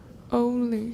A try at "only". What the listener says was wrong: Yeah, you have kind of an O sound to your O, which is more British. So odo, only.